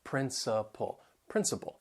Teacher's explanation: they have three syllables the stress is on the first syllable that second and third syllable you'll hear that schwa sound principle